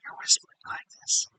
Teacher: a lot of the sounds are produced with a whisper phonation